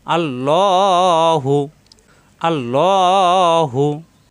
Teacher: কারণ আল্লাহ শব্দের ডানে জবর এবং পেশ আসলে আল্লাহ শব্দ পুর হয়। অর্থাৎ মোটা হয় ল ল আকার প্রকাশ পাবে না।